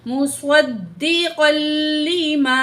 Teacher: जो है अलिफ मद है, दो अलिफ के बराबर खींचेंगे